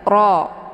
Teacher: ra ini dua-duanya dibaca tafkhim, yaitu tebal, dengan posisi pangkal lidah juga terangkat ke langit